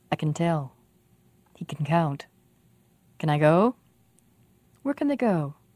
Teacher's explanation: when we say can we almost don't say the vowel the ah at all the word sounds like listen i can tell he can count